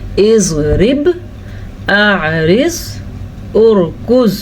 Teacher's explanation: زبان کا موٹا حصہ اوپر والے دانتوں سے لگ رہی ہے، اضراس علیٰ سے لگ رہی ہے، تو پھر نکلتا ہے زواد. تو جہاں پہ اس پہ آپ کی زواد پہ زبان رک رہی ہے وہی اس کا مخرج ہے. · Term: زواد حافیہ